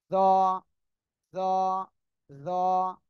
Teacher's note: জিহ্বার আগা সামনের উপরে দুই দাঁতের আগার সাথে লাগিয়ে এটা মোটা আওয়াজে উচ্চারণ হবে